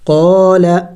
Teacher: قاف الف زبر قا، لام زبر لا، قال. الف مدہ ہے، قاف کو کھینچیں گے ایک الف کا مقدار